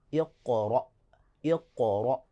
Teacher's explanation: اگر حمزہ ساکن ہو جائے تو وہاں تھوڑا سا ہم بریک لگاتے ہیں اور سختی سے آگے بڑھ جاتے ہیں۔ · آخر میں حمزہ ساکن ہے تھوڑا سا، یعنی کہ سختی سے ہم اس پہ وقف کریں گے